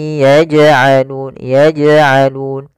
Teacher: jim ada bacaan qalqalah, yaitu huruf jimnya memantul